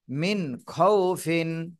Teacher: খ এই খ টা হলো ইজহারের হরফ এজন্য এই খ তে এই নুন সাকিনে এখানে স্পষ্ট করে পড়তে হবে গুন্না করা যাবে না